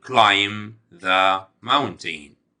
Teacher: ونخلي بالنا إن الحرف البي في كلمة climb طبعا silent. اوكي، لما بيجي حرفين الام بي في نهاية الكلام، حرف البي لا ينطق، بيكون silent، فبقول climb the mountain.